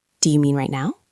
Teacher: The stress is on mean and now.